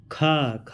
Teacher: स्पर्श व्यंजन कंठ ध्वनि, अघोष महाप्राण ध्वनि है